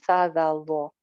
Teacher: ये तीनों एक ही जगह से निकलते हैं ना, सा जा वो, ऊपर वाले दो दांतों के किनारे से बगैर सीटी के।